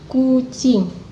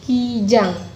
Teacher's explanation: Perbedaan itu disebabkan oleh adanya bunyi vokal yang langsung mengikutinya, karena bunyi U yang langsung mengikuti K pada kata kucing merupakan vokal atas belakang bulat, maka K diucapkan dengan lidah lebih ke belakang dan bentuk bibir agak dimoncongkan